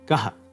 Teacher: it makes an H sound followed by an echo of the preceding vowel of the syllable. The echo is always the short version of the vowel, no matter which vowel it is. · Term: visarga